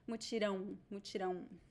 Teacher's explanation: In the indigenous language, it was just one sound, but in Portuguese it is So we have two vowels. It is a diphthong, a nasal diphthong. So you need to pronounce the two vowels.